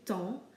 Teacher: The same can be said of temps, where we don't pronounce the P or the S, we just simply say temps